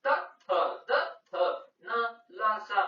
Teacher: ನಮ್ಮ ನಾಲಿಗೆ ಹಲ್ಲಿಗೆ ಮುಂಭಾಗದಲ್ಲಿರುವ ಹಲ್ಲಿಗೆ ತಂತಕ್ಕೆ ಅದು ಟಚ್ ಆಗ್ತಾ ಇದೆ · ನಮ್ದು ನಾಲಿಗೆ ಹಲ್ಲಿಗೆ ಹೊಡಿತೈತೆ ಮುಂಭಾಗದಲ್ಲಿರುವ ಹಲ್ಲಿಗೆ ದಂತಕ್ಕೆ ಅದು ಟಚ್ ಆಗ್ತೈತೆ ಸೊ ಅದರಿಂದ ನಾವು ಏನಂತ ಕರಿತೀವಿ ಅಂದ್ರೆ ಅದನ್ನ ದಂತ್ಯಗಳೆಂದು ಹೇಳುವರು ನೆಕ್ಸ್ಟ್ ಉ